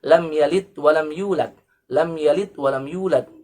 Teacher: Seharusnya dengan huruf dal, dengan harfud dal dan diqalqalahkan. Lam yalid qalqalah sughra, walam yulad qalqalah kubra karena di akhir ayat atau diwaqafkan, ya.